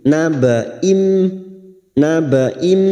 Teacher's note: siap masuk dan mendengung masuk pada huruf mim dan mendengung selama tiga harakat